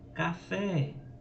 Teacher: a última sílaba é tônica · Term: oxítonas